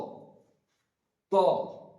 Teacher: সামনের নিচের দাঁতের সঙ্গে জীবের আগা লাগিয়ে উচ্চারিত হবে ত